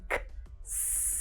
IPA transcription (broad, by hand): ks